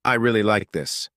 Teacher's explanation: with stress on really, it shows excitement · with stress on like, it sounds more sincere